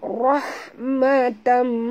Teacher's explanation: tanwin bertemu dengan mim, tutup mulut, dengung. Ya, di sini idgham al-gunah lagi ya. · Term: idgham ma'al gunah